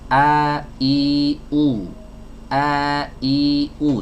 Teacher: huruf hamzah tuh kan keluar dari tenggorokan bagian bawah